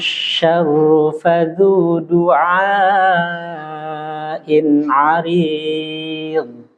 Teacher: Ada yang harus dikonsentrasi, kalimat syarru, ru-nya nggak boleh dipanjangkan. Kemudian arid, botnya dipertebal lagi.